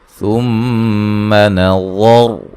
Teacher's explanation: میم مشدد پہ غنہ ضروری ہے، وا کو موٹا ادا کریں گے، را کو بھی وقفاً وصلاً موٹا پڑھیں گے